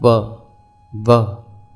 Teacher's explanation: दंतु अर्थात व व का उच्चारण स्थान दंत और कोष है जब हम व बोलते हैं तो दांत होठों का स्पर्श करते हैं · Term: वकार